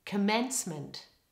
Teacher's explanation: the stress in the word commencement is all on the second syllable the letter O in the first syllable becomes schwa · The letter O in the first syllable becomes schwa, just like in the word today. Try it with me now.